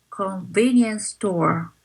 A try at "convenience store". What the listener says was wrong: And this time convenience and store is kind of duplicated. So you don't have to say 2S.